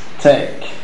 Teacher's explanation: the last sound of the given word is the velar plosive, voiceless velar plosive.